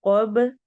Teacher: बा पे कलकला करेंगे। मिन क़ब्लिकुम लअल्लकुम तत्तकून, कू कौफ मोटा है और वाव पे हम वाव मद्दा करेंगे।